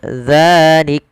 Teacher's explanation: Misalkan kalau kita waqaf pada lafal zalika, maka dimatikan kafnya, zalik. Matikan kaf dengan sifatnya, ada sifat syiddah dan sifat hamasnya